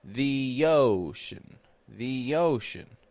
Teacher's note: I'm using the Y Glide from the e to connect to the O in Ocean